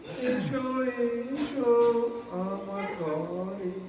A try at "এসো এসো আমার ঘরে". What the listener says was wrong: উচ্চারণটা ঠিক করবেন। বাইরে থেকে শুনতে লাগছিল, এসো এসো আমার ঘাড়ে এসো।